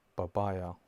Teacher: Because the sound P in Arabic doesn't exist, so we have to replace it with the closest equivalence, and it is the letter B. So that's how we read in Arabic, babaya.